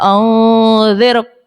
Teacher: یہاں پر رو ساکن سے پہلے زیر ہے، اصلی زیر ہے تو رو کو باریک پڑھیں گے